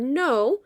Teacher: So the word no, I don't hear any consonants at the end of that. It's saying it's long vowel sound because it's open. It's not closed in by a syllable.